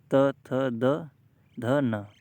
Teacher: दंत से टच होती है जीभ आपकी, दांत से। बिना दांत के टच हुए इन वर्णों को, इन अक्षरों को नहीं बोल सकते आप।